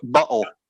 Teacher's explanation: it's a glottal stop back in the back of the throat